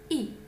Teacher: Самый закрытый гласный переднего ряда. При его произнесении положение губ, словно мы неохотно улыбаемся. Углы рта сильно растянуты, кончик языка упирается в нижние зубы. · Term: Гласный И